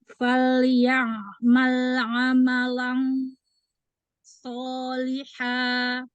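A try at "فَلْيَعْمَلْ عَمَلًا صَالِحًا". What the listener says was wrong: Dengungnya tidak tafkhim lagi. Waktu pas baca amalan, ujung lidahnya di mana sih nih? Yo, ujung lidahnya itu di mana tuh?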